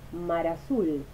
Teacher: Por ejemplo, en las palabras mar azul, la consonante final de mar silabifica con la primera vocal de azul, mar azul. La noción de límite de palabra en relación con la división silábica desaparece durante el habla rápida y surgen cambios en el eslabonamiento de vocales y consonantes.